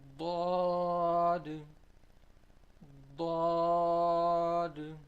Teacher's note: The sides of our tongue should touch the upper premolars.